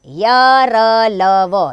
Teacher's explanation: इन व्यंजनों का उच्चारण करते समय जिह्वा मुख के किसी भी भाग से पूरी तरह स्पर्श नहीं करती। ये संख्या में 4 है, य, र, ल, व, ये 4 आपके अंतस्थ व्यंजन हैं।